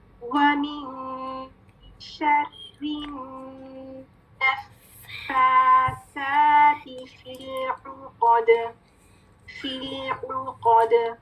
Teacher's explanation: ٹھیک ہے, مشدد letters mark کر لیں. نون مشدد غنہ کے ساتھ اور فا مشدد 2 فا ادا کرنے ہیں